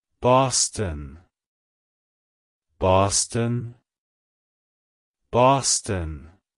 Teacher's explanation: To pronounce it correctly, emphasize the ah sound in the first syllable and the bun sound at the end. Also, be sure to stress the first syllable more than the second.